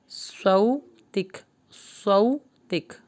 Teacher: آخر میں جب کاف کو روکیں گے تو ہلکی سی ہمس یعنی ہلکی سی سانس نکلے گی